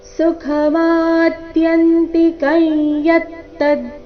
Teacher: ಅನುಸ್ವಾರದ ಉಚ್ಚಾರಣೆ ನಾಸಿಕ ಯ ರೀತಿ, ಕಾರಣ ಮುಂದಿನ ಶಬ್ದ ಯತ್ತದ್ ಅವರ್ಗೀಯ ವ್ಯಂಜನ ಯದೊಂದಿಗೆ ಪ್ರಾರಂಭವಾಗ್ತಾ ಇದೆ. ಅದಕ್ಕಾಗಿ ಅದಕ್ಕಿಂತ ಮೊದಲು ಬಂದ ಅನುಸ್ವಾರದ ಉಚ್ಚಾರಣೆ ನಾಸಿಕ ಯ ರೀತಿ ಬರಬೇಕು.